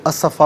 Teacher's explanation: ہم پڑھیں گے بہذا الحدیث اسفا، یہاں وقف کریں گے تو اسفا پڑھیں گے. 2 زبر کی تنوین وقف میں الف سے چینج ہو جاتی ہے